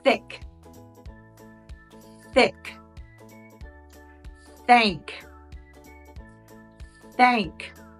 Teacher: the soft th sound is unvoiced there's no vibration in the throat